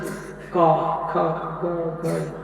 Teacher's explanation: कंठ से का ख ग घ, ये 5 अक्षर कंठ से निकलता है, इसलिए इसको बोलते कंठ वर्ण